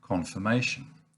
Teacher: schwa an uh sound but there's also the word confirmation now in this case it's the ir which is pronounced as a schwa